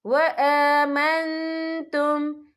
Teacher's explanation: حمزہ کے بعد کھڑی حرکات ہے تو ہم یہاں 2 یا 3 حرکت کے برابر کھینچیں گے